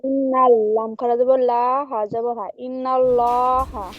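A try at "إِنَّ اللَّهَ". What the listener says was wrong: জি, লাম, নুন লাম যাবার নাল, লাম খাড়া যাবার লা, প্রথমে লা পড়েছেন, লা পড়বেন না, ল পড়বেন। লাম খাড়া যাব ল, ইন্নাল্লাহ। হা যাবার হা।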